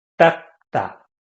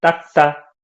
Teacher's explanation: people usually pronounce it as like 닦다, like double G